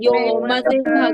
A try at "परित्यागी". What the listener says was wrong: परी गा दिया, परी दीर्घ नहीं करना है, परित्यागी परित्यागी। आपने परी बोल दिया, परी परी नहीं है, परित्यागी, परित्याग छोड़ना, परित्यागी, ठीक है।